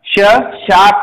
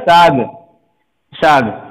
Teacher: इस श मूर्धन्य श को बोलने में थोड़ा सा हमें दिक्कत होती है, कठिनाई का सामना करना पड़ता है, तो हम स बोल दिया, सीधा स